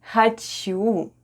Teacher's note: О /o/ is unstressed in the word ХОЧУ /hhachu/ and is pronounced as /a/